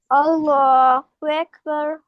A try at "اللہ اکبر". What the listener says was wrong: ہاں، اللہ ہو کو کلیئر کریں، اللہ ہو،